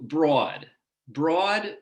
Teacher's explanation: for many new yorkers this vowel is raised that is the position of the tongue is higher when this vowel is articulated leading to a different vowel quality as in the beautiful marty